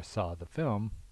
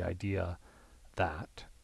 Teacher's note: you're gonna not have an R there because the following word begins with a consonant